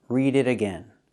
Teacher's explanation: We hear the T in it pronounced as a fast D.